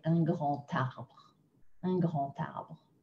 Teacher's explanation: This one is also not the most logical one, but when we have a word that ends with D, and another word that starts with a vowel or a H, we're going to drag that sound across, make the liaison with a T sound